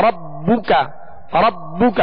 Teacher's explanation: اور اسی طرح ربک ربک ربو کا نہیں ربو کا ایسے نہیں بلکہ با پر صرف پیش ہے تو اس کو بغیر کھینچے پڑھیں گے اور معروف طریقے سے ہونٹ گول کر کے پڑھیں گے. ربو کا کاف کو بھی نہیں کھینچیں گے.